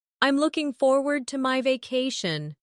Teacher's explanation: Notice the smooth connection between looking and forward.